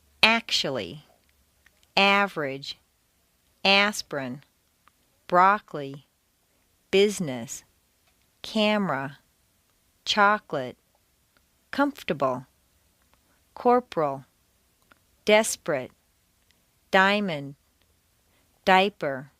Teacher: Intonation can also completely get rid of certain entire syllables. Some longer words that are stressed on the first syllable squeeze weak syllables right out. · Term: Squeezed Out Syllables